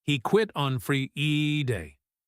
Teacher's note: He stretches out the word Friday a little bit. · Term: stretching